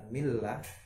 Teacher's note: Harus dibaca tipis lamnya, tidak boleh dibaca tebal. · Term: lam tipis